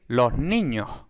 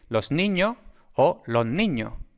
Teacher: el fonema S, pues tiene un alófono S, tiene un alófono H, una aspiración